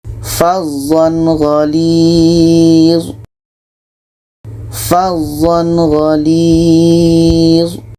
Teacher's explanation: Jadi ketika tanwin bertemu dengan gha, ini izhar halki, tidak ada dengung, dan harus dibaca jelas. Tanwin jelas, gha jelas.